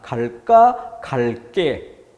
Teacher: 갈게는 된소리 발음이 되지만 의문형이 아니란 점에서 발음은 된소리, 적을 땐 예사소리 표기. 갈까 의문형, 물음표 붙일 수 있는 의문형이기 때문에 된소리 그대로 표기도 쌍기역 대비하는 부분이죠.